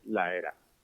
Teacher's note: ella dice la era en plural sin ningún tipo de aspiración